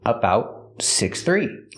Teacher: The T in about is a stop T.